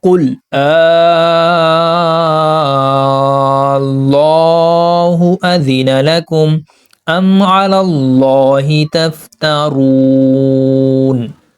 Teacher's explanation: اب یہاں پر بھی اللہ کا لام موٹا پڑھا ہم نے کیونکہ اس سے پہلے زبر ہے۔